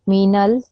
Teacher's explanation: You don't prolong the l sound.